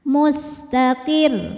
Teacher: Sinnya berdesis ya kayak ular karena punya sifat namanya shofir